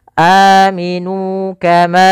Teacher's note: Maka di sini ada huruf mad berupa alif, sebelumnya hamzah berharakat fathah. Maka kita panjangkan dua harakat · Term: mad badal